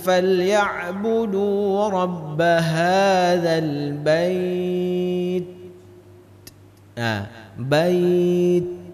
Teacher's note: huruf ta itu dengan huruf kaf, cara pengucapannya tertahan baru mengeluarkan angin